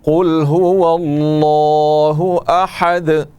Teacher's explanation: احد دال کے اوپر دو پیش ہیں, لیکن وقف کرنے کا قاعدہ یہ ہے کہ دال کو ساکن کر دیں گے, چونکہ آخری حرف ہے اس پر ہم وقف کر رہے ہیں, اور دونوں پیش جو ہیں وہ نہیں پڑھیں گے, ان کا تلفظ نہیں ہوگا, دال ساکن پڑھا جائے گا اور دال میں قلقلہ ہوگا